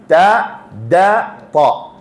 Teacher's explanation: നാവിന്റെ അഗ്രം മുകളിലത്തെ മുൻപല്ലിന്റെ ഊനിലാണ്. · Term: താന്റെ മഖ്റജ്